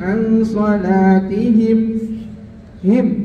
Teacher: izhar syafawi, nggak ada dengungnya ya, mimnya jelas